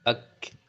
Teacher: Dia hames mengalir nafas tapi mengalirnya tidak sederas atau tidak seperti huruf-huruf lain. Dia seperti mendesis aja gitu ya. Ak jadi enggak ak enggak gitu ya. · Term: hamas